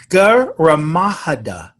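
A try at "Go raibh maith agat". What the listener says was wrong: last one is AGAT. Yeah, you're close.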